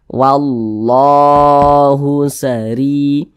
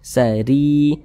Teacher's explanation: baca kasrah yang yang berposisi di tengah bacaan seperti ini maka huruf ro dibaca tarkik Dibaca tipis jadi ketika Kita mengucapkannya pangkal lidah kita itu tidak terangkat ke atas